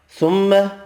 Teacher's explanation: میم مشدد پر غنہ کرنا ہے